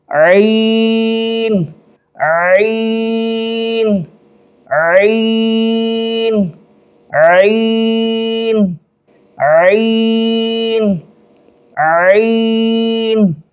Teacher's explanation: ایک الف سے زیادہ کھینچیں گے اور تھوڑا جو ہے زور لگا کر پڑھیں گے